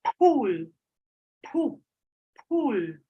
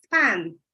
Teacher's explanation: Nouns pool in English, the correct allophone of is aspirated. The aspirated allophone has a brief puff of air. With an incorrect allophone of, it sounds like this, pool.